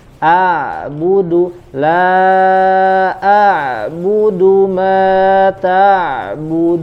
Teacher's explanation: Alirkan sedikit lagi suara pada huruf ain.